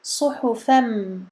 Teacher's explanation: Ici on a idgham, donc l'assimilation du noun as-sakina dans le mim qui suit